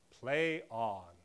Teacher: Spondee, a metrical foot characterized by 2 consecutively stressed syllables. De-dum becomes dum-dum.